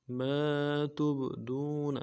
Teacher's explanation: تا کو با کے ساتھ ملانا ہے، با جب ساکن حروف قلقلہ میں سے ہوگا قلقلہ کریں گے